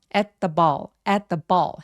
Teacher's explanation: At the ball 할 때 at의 t와 the의 th가 사실 혀의 위치가 매우 가까워요. 그래서 그냥 한 번만 발음하는 느낌으로 그냥 시옷 받침처럼 at the ball 해주시면 돼요.